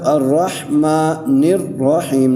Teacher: نون کو را سے ملانا ہے، را کو دوبارہ پڑھنا ہے